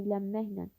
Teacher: Evlənməklə sözündə birinci N samiti M, daha doğrusu ilə sözdə bir N samiti var. Sözdə olan N samiti M kimi tələffüz olunur.